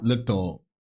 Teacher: A dark L that is pronounced more in the back of your throat and a light L that is more pronounced with the tip of your tongue.